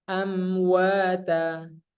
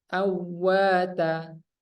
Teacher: Amwata bukan awwata ya, harus jelas mimnya.